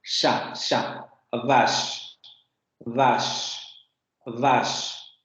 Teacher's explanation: la lengua va a subir hacia la zona de los postalveolos o la zona prepalatal, lo que les comentaba, entre el bordecito este duro que tenemos arriba en el paladar y ya el paladar en general, tenemos una transición y es ahí donde se coloca la lengua.